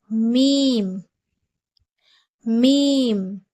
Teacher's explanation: மீமுடைய மகர பிறப்பிடம் இரு உதடுகளின் காய்ந்த பகுதியிலிருந்து பிறக்கப்படுகிறது அதாவது நம்மளுடைய இரண்டு உதடு இருக்கு இல்லையா அதோட வெளிப்பகுதியிலிருந்து தான் நம்மளுடைய மீம்